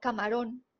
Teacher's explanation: ron es la sílaba tónica es la última sílaba